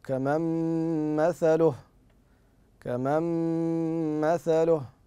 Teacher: ن ساكنه بعد حرف الميم والميم من حروف الادغام بغنه